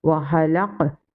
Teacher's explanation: Here is kalkala sakina and we will read with echo sound.